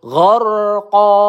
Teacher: ro sukun ya sebelumnya berharakat fathah maka kita baca dengan tebal gharqo qo qo ini kita panjangkan satu ayunan atau dua harakat